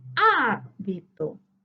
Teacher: su sílaba tónica se encuentra en la antepenúltima sílaba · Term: palabra esdrújula